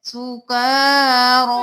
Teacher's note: का और रो दोनों को एक ही अलिफ के बराबर खींचना है